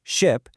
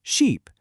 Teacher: The only difference is the vowel. One has that short I sound like in ship. The other has that long e sound as in sheep.